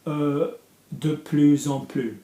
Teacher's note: So in this case it's before an adjective, so it's going to be de plus en plus, plus. So you've got to hear the Z sound because you've got an EN.